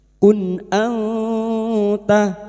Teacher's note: Maka bunyi nun sukun dibaca jelas tanpa mendengung.